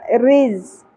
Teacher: زا شدت سے ادا ہوگا رز اور را باریک ہوگا کیونکہ اس کے نیچے زیر ا گئی